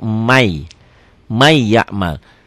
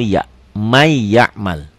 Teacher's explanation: ditulisnya Man ya'mal dibaca jadi May jadi double double Y ya n-nya hilang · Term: Idgham Bighunnah